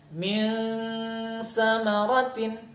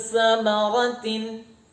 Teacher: kita Arahkan dengungnya ke ujung lidah ketemu dengan ujung gigi seri atas